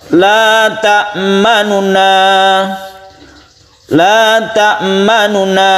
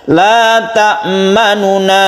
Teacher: Nun yang pertama yang dhammah itu, dhammahnya itu suaranya dibaca sepertiga saja. Itu namanya ar-raum.